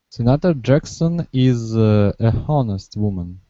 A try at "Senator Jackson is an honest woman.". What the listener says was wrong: If we pronounce the H, it would be But remember, in this word, the H is Silent. So this actually starts with a vowel sound. Senator Jackson is an honest woman.